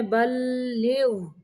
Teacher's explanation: یا ایہا الرسول بلغ، غین کو قلقلہ نہیں کرنا